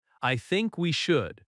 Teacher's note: I think we should stress think and should.